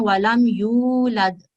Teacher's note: اور یہاں لام پر آپ نے رکنا نہیں ہے، جسٹ ہم نے اس کو جوائن کرنا ہے. لام کو میم کے ساتھ صرف ملانا ہے، اس پر رکنا نہیں ہے، اس پہ ٹائم نہیں دینا.